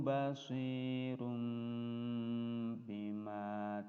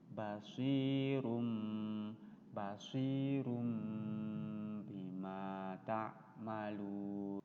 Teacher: ada ee kode huruf mim kecil di atasnya itu menandakan bahwa tanwin ini suara Nun matinya diganti menjadi suara mim mati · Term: iqlab